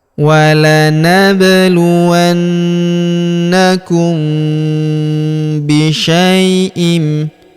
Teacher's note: Kemudian huruf mim sukun bertemu huruf bi. Maka mim sukunnya melebur ke huruf b ya. Kita tahan dan kita denggungkan dua sampai harakat.